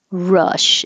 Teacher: so the tongue is low and pulled back